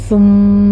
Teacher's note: ثم میں سا کو نرمی سے پڑھیں گے، یہاں سیٹی کی آواز بالکل نہیں آنی چاہیے۔ میم کے پر غنّے واجبہ کریں گے، 2 کاؤنٹ کرنا ہے۔